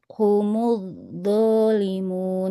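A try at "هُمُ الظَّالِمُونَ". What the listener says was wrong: Nah, jangan humud do. Nah, humuz humuz zalimun. Nah, yang di awalnya dia seperti ada perpindahan makhraj ya. humuz, tapi ketika diucapkan jadi do. Humuz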